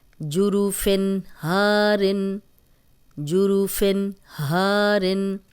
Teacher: آگے ہا آ گیا ہے تو ہم غنہ نہیں کریں گے کیونکہ حروف حلقی ہے یہ